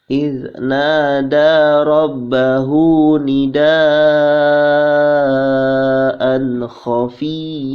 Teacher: hukumnya idhar halqi ya dibaca tidak dengung atau dibaca jelas